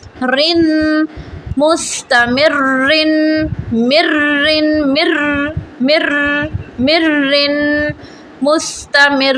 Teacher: را میں یہ اس کی کوالٹی ہے کہ اس میں کپ کپی آتی ہے